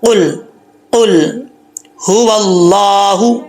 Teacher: زبان کی جو جڑیں ہیں اس کے ساتھ لگیں گی تو یہ قاف پڑا جاتا ہے موٹا. قل، قل هو اللہ، یہ ہاں بھاری آواز میں پڑھا جائے گا، اس کو بریک آواز میں نہیں پڑھیں گے.